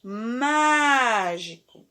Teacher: aqui temos uma proparoxítona e a sílaba mais forte é a antepenúltima